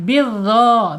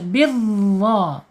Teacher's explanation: Bidha sama ya, makhrajnya dengan dzal, tapi dha ini harus tebal ya